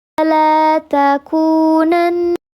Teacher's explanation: namanya lam qamariyah, dibacanya jelas, ditahan dua ketukan